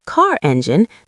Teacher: That's called non-rhotic speech. Car becomes ca, but in car engine, the R softly returns.